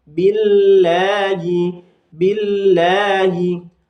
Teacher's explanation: Di sini ada lafzul jalalah didahului kasrah, maka dibaca tarqiq atau tipis.